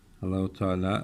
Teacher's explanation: Bir önceki harf ötreli olduğu için bu lamı kalın okuduk.